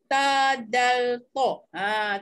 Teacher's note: makhraj huruf yang duduk di hujung lidah dan pangkal gigi kacip atas